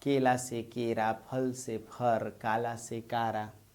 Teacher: ल ध्वनि र में बदल गई